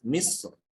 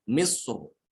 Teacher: Kemudian yang kedua pada lafaz misr apabila diwakafkan di situ ya. Misr boleh dengan tipis misr atau tebal misr ya.